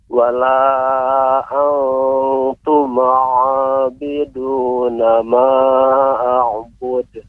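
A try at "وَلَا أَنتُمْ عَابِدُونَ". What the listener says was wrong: Ya, sebelumnya Pak, koreksiannya untuk pengucapan mim tidak boleh dipantulkan. Contohnya wala antuma. Yang tepat antum'a.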